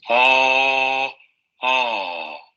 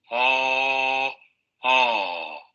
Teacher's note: Abierta posterior no labializada